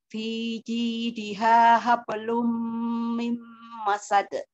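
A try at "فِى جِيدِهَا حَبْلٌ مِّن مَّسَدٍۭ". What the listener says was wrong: Ukti di mimnya masih pendek sayang ya di ayat 4. Wam ini juga jangan terlalu lama nahan wam, tapi jangan terlalu cepat, jangan terlalu lama nahan mimnya.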